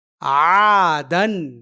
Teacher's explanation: یہ الف یہاں عین کے زبر کی آواز کو دو گنی لمبی کرنے کے لیے ہے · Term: الف مدہ